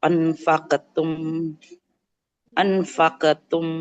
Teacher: anfaqa wa ma Nah, jadi eh anfaqtum kalau huruf qaf itu seperti qaf huruf qafnya ya, karena huruf qafnya tebal, maka ketika qalqalah pun dia tebal ya